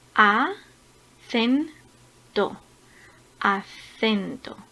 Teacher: La sílaba tónica está en la segunda sílaba empezando por el final. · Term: palabras graves